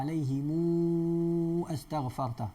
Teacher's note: Dia baca dengan silah 6 harakat.